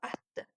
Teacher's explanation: l sammiti özündən öncə gələn sözlə uyğunlaşıb, yəni assimilyasiyaya uğrayıb